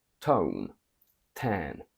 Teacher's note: In American you have a full T when T appears at the beginning of a word